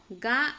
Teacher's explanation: గా అనే అక్షరం వచ్చేసి అల్ప ప్రాణము, నాదము, కంఠ్యం అవుతుంది